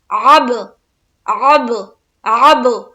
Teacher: first تو عین نکالنے کی کوشش کریں گے اور عین نکالتے ہوئے با سے ملائیں گے اور کریں گے قلقلہ